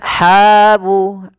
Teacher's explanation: ha ini mad tabi'i 2 harakat dan hati-hati dalam melafalkan ha.